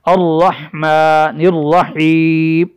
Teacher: رحمہ را کے بعد چونکہ ہاں ہے اس کی ادائیگی حلق سے ہوگی۔ الرحمن الرحیم، الرحیم، اس را کو بھی موٹا کر کے ہم پڑھیں گے۔